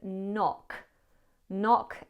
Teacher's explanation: At the end there we have this wet k sound.